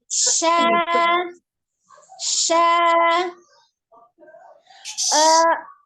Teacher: Shinnya tengah lidah. Tengah lidah menyentuh langit-langit tengah.